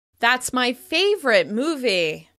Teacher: By stressing the word favorite, you make it extra clear how you feel about the movie.